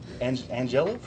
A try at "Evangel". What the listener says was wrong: Starts with an E. Evangel.